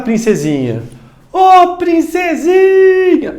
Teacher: ela é uma paroxítona, porque de fato, a penúltima sílaba mais forte.